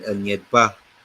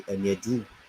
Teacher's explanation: You are having a rising tone on top of the Anyed. But when you don't have a rising tone, that is a singular. So it will be Anyedu instead of Anyedba.